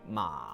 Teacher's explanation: Make your voice creaky like a door that needs oil. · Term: half third tone